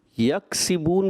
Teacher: یکسبون میں کاف ہے، آپ نے اس کو قاف پڑھ دیا